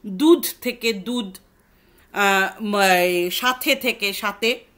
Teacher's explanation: তাহলে এই ক্ষেত্রে আমরা ইয়েতে রাড়িতে আমরা কি কি দেখতে পাচ্ছি, যে প্রথমত তো শব্দের শেষে মহাপ্রাণতা লুপ্ত হয়ে যাচ্ছে